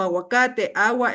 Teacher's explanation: en palabras como aguacate agua el sonido de la letra g casi desaparece